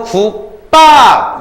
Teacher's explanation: 안 울림 플러스 안 울림이 만났을 때 앞 글자는 그대로지만 뒤에 게 된소리로 바뀌는 거예요 · 기역 안 울림이지? 비읍 안 울림이지? 그랬을 때 뒤에 있는 것이 쌍비읍으로 바뀌죠. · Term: 된소리 대기